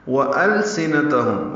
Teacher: واو ہونٹوں کی نا تمام گلائی سے ادا کریں گے